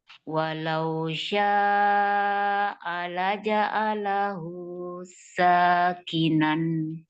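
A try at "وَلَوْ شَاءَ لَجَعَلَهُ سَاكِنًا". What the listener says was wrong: Oke, pas hu ke sa, jangan ada jarak, jangan ada jeda, langsung. Walau datar ya. Jangan terputus suaranya.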